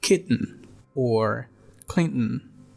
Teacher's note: Another allophone of the phoneme T, it's the glottal one. It can occur in words like kitten or Clinton.